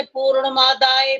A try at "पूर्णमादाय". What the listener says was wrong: जो पूर्ण मादाय बोला है ना, मादाय नहीं बोल सकते।